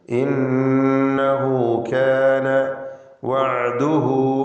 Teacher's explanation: ഇന്നഹു നൂൻ മുശദ്ദദ മണിച്ചുകൊണ്ട് ഉച്ചരിക്കുക. ഹായിന് 2 ഹർക്കത്തിൻ്റെ അളവിലുള്ള മദ്ദുസ്സിലത്തി സൂറ എന്ന ദീർഘം നൽകുക.